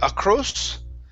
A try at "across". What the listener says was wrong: Ah, instead of O, ah, across.